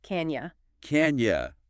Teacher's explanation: The vowel sound in you gets reduced to a weaker ya sound.